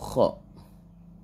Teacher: ketika menyebutkan huruf Kho itu kalian wajib ngorok